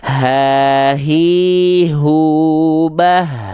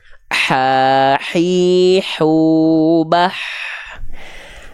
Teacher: hak kecil dan hak besar sama-sama mengeluarkan sifat nafas mengalirkan nafas tapi bedanya kalau hak besar karakternya biasa kalau H kecil karakternya · kalau hak besar karakternya biasa, kalau hak kecil karakternya dia seperti seolah sedang berbisik.